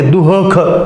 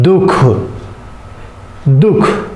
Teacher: अर्ध विसर्ग का मतलब यहां विसर्ग का पूरा उच्चारण नहीं होगा।